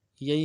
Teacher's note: یہی میں دو یا ہیں، یا لین ہیں، بغیر کھینچے پڑھیں گے